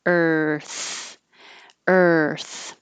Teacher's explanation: when you say Earth you're starting with your tongue in the r position so er and you're just making the sound of R ER like a pirate and then your tongue goes forward like